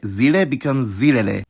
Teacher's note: notice how the stress never moves when the article suffix is added